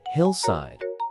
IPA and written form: ˈhɪlˌsaɪd (hillside)